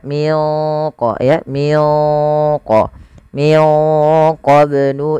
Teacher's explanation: ada bacaan qalqalah sama membacanya sebagaimana tadi kita membaca huruf qof yang sukun yaitu wajib dipantulkan